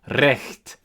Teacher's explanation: R in Old High German is trilled.